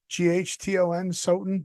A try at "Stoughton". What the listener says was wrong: Stoughton. There's a T in there. Stoughton.